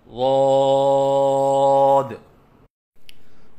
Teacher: اور 3 الف کے برابر لمبا کر کے پڑھیں